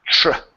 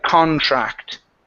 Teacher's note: Just remember with the TR. Okay. That's going to be a CHR sound. Tr. Okay, like contract.